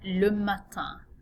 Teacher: notice another nasal vowel sound at the end of this word